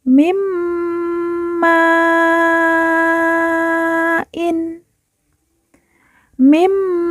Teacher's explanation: nun sukun kita leburkan langsung masuk ke huruf mim. Kita langsung fokus ke huruf mim dengan ditahan didengungkan 2 harokat